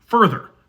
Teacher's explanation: If you're American like me, you probably pronounce the first vowel the exact same as the second vowel.